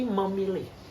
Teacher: fonem P dan juga fonem M itu berada pada daerah artikulasi yang sama, yaitu bilabial. Contohnya misalnya ketika Anda imbuhan me kemudian mendapatkan kata ditambah dengan kata pilih, maka kata yang terbentuk bukan memilih tetapi memilih, sehingga fonem P itu luluh menjadi fonem M.